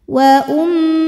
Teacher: Wa ada hukum gunnah musyaddadah atau wajibul gunnah atau mim musyaddadah karena mim bertasydid. Cara bacanya dengung, bunyi M-nya tahan sampai ada suara masuk hidung kurang lebih 2 harokat. Wa ummuhu. Hukumnya adalah madsilah qasirah karena ada hak dhamir yang diapit 2 huruf hidup dan huruf setelahnya bukan hamzah, maka hak dhamirnya ini panjang 2 harokat.